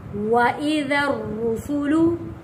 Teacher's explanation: وَإِذَا الْجِبَالُ نُسِفَتْ، وَإِذَا الرُّسُلُ، دیکھیں یہاں پہ را موٹا پڑھا گیا ہے اور را کے اوپر سختی کے ساتھ رکے ہیں کیونکہ جب بھی کسی حرف کے اوپر تشدید آتا ہے سختی کے ساتھ تھوڑا رک کر اس لفظ کو ادا کیا جاتا ہے۔